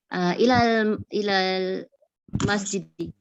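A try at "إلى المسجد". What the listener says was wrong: Jangan sambung. Cuba putus-putus.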